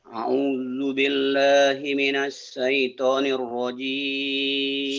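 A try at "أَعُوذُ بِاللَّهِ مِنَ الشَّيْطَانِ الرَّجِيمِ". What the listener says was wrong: Shin-nya digedein ya Pak ya? A'udzu zalnya jangan terlalu rapuh. A'udzu billahi minasyaitonir rajim. Shin, ayo.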